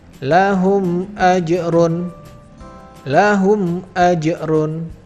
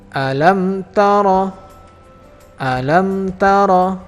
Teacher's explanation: Ini tidak boleh karena di sini adalah hukumnya idhar syafawi, maka mim sukunnya harus dibaca dengan jelas dan tidak boleh ditahan 2 harokat. Ingat, tidak boleh ditahan 2 harokat, tapi harus dibaca dengan jelas.